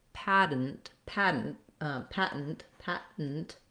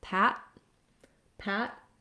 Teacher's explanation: lift up my tongue for the T, and then don't let the T out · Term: stopped T